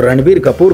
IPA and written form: rəˈɳbiːr kəˈpuːr (Ranbir Kapoor)